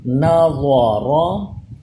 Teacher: را بھی پر پڑھا جائے گا کیونکہ را کے اوپر زبر آ جائے تو یہ بھی پر ہوتا ہے